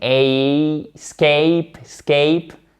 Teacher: Mais I court, qu'on n'entend pas beaucoup puisque l'accent tonique est sur la syllabe d'après. Donc, comme la syllabe d'après est porteuse d'accent tonique, elle va un peu masquer les autres sons du verbe.